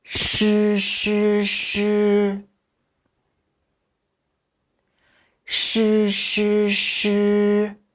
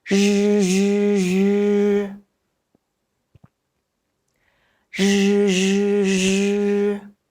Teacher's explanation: The pronunciation of zhi is basically the same as that of shi, except that the tip of the tongue is slightly rolled up and the vocal cords vibrate while pronouncing